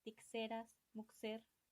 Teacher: los españoles no traían la j y utilizaban un fricativo x y decían tixeras, muxer.